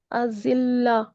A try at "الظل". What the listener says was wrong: जिल्ला नहीं, الظल। वा को मोटा भी करना है ना, मोटे के मश्क कर रहे हैं हम यहाँ पे।